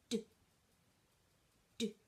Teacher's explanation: It's quite a short clicked sound, and in order to make it properly, your tongue has to be up behind your teeth.